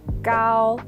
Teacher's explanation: steady and level meaning it doesn't rise or fall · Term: first tone